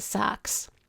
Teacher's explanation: I like to think of this low front vowel as the Chicago White Sox vowel because it's very typical of Chicago English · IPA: [saks]